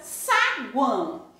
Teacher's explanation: Há o encontro de uma semivogal, mais uma vogal, mais uma semivogal na mesma sílaba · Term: tritongo